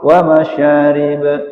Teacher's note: Nah, dia jadi qalqalah kalau waqaf wa masyarib. Tapi kalau terus ya qalqalahnya dihilang.